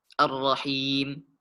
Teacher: Dan pada kata Ar-Rahim, di sini kita dapati harokat kasrah bertemu dengan ya sukun. Maka cara membacanya dipanjangkan 2 harokat. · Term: mad tabi'i